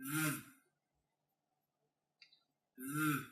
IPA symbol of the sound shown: ð